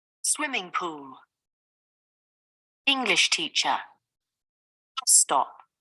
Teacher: The stress is on the first word in compound nouns. It is usually on the first syllable of the first word.